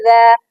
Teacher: حمزہ زیر ای، ذال الف زبر ذا، یہاں پر ذال کو بھی نوٹ کریں، ذال نرم حرف ہے، اس میں سیٹی کی آواز بالکل نہیں آئے گی